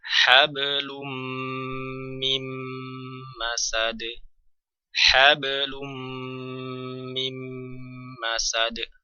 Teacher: Maka untuk mendapatkan gunnah maka harus ditahan 3 harokat.